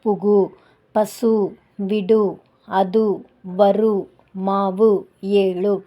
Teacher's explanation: ஓசை குறையாமல் ஒரு மாத்திரை அளவில் முழுமையா ஒலிச்சதுன்னா அதை முற்றியல் உகரம் அப்படின்னு சொல்றோம்